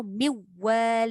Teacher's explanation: Kalau dia baca dengan kamil ataupun penuh, dia takkan bunyi nun tu.